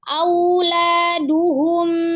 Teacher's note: Waw sukun sebelumnya fathah dibacanya dengan memenyungkan kedua bibir